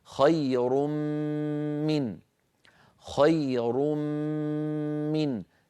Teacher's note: لا يبقى للنون اثر لانها تحولت الى ميم وادغام في الميم فصار النطق بميم مشدده · مثال التنوين خير من، خير تنوين من أولها ميم، فخير ندغم هذا التنوين في الميم التي بعده فيصير النطق خير من، خير من. لا يبقى للنون أثر لأنها تحولت إلى ميم، وأدغمنا الميم في الميم فصار النطق بميم مشددة